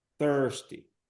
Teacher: Perceba que esse I é schwa.